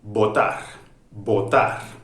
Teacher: cerrar porque cerramos los largos los labios votar votar de acuerdo el aire no pasa cierran totalmente los labios construimos del aire y pronunciamos la palabra también con una vibración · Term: consonante oclusiva